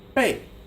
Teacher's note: The fourth tone is like you're shouting at someone.